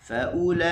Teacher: kita tekan di u dan lam kita buka